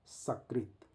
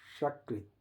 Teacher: सकृत करना है तो दांत से टच करके जीभ को बोलना है सकृत। और तालु से श को टच करके बोलना है शकत।